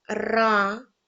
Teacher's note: ми чуємо перший звук р це приголосний твердий за ним іде звук а голосний